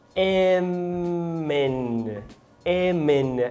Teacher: temos a palavra hem juntando com N. E aqui é uma clássica ligação fluida